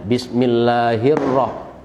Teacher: Ketika al bertemu dengan huruf ro, maka alnya tidak terlihat atau tidak terbaca. Ada dalam tulisan tapi tidak ada dalam bacaan. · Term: idgham syamsiah